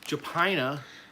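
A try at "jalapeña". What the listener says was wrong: Okay, you don't say the J. Hupina, right? Hupina.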